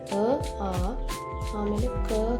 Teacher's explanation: ಕಂಠವರ್ಣಗಳು ಅಂದರೆ ಕಂಠದಲ್ಲಿ ಹುಟ್ಟುವಂತ ಅಕ್ಷರಗಳು